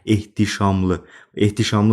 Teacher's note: Burda heç bir hərf düşməsi və hərf artırılması yoxdur. HT birləşməsi də olduğu kimi oxunur. H T birləşməsində T d-ya çevrilmir.